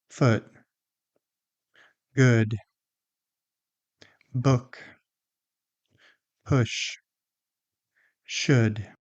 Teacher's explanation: The lips are still rounded. The tongue is a little bit lower. The lips are less tense. The vowel is shorter and more relaxed. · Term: uh sound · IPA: /ʊ/